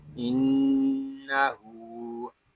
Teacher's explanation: نون مشدد میں غنہ ہوگا اور غننے کی مقدار ایک الف تک ہوگی، اور الٹا پیش اس کو بھی ہم ایک الف تک کھینچ کر پڑھیں گے۔